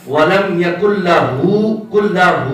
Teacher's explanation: ہو کو لمبا کرنا ہے, ہم نے لام کو لمبا نہیں کرنا